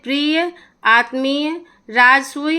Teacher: य आए तो अंतत अ का उच्चारण पूरा होता है